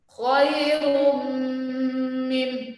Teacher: Ketika tanwin ketemu dengan huruf mim di situ, maka huruf mimnya harus ditahan, ya. Kita kenal dengan istilah idgham bi gunnah, ya.